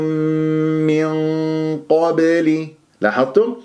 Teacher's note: ساكنه بعدها قاف قبلي اخفاء بيقول غنه مفخمه بمرتبه القاف ثانيه يعني الغنه تكون مفخمه مرتبه ثانيه